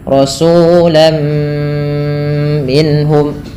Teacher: Apa yang dimasukkan adalah bunyi suara tanwinnya kepada huruf setelahnya. Rasulan menjadi rasulam, sehingga terdengar bunyi suara huruf mim. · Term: idgham bi gunnah